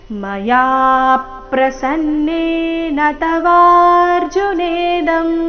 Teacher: ಮಯಾ ಯ ದೀರ್ಘ ಹೇಳಿ ನಂತರ ಅದರ ಮೇಲೆ ಆಘಾತ ಬರಬೇಕು